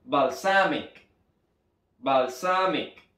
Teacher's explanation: donde la acentuación de la sílaba tónica está en el medio. Balsamic.